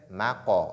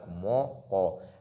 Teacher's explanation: mim est légère, Qaf est emphatique, maqa, on ne dit pas donc moqa.